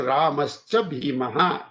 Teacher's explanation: So the visarga goes away and the sh comes.